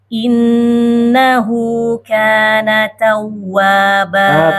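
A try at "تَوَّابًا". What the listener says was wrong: Tasydid waw, Bu. Tawwa.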